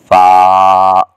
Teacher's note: آخر میں فا پر آواز بند ہو جائے گی اور اوپر کے دانت ہونٹوں کے ساتھ لگ جائیں گے